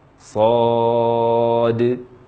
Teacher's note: Namun di akhir setelah mim ada huruf shad. Karena huruf shad ini berakhiran dengan huruf dal, maka huruf dal dikolkolahkan.